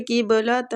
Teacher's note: ادھر بھی قاف مستعلیہ ہے، پور پڑھیں گے، با پہ قلقلہ کریں گے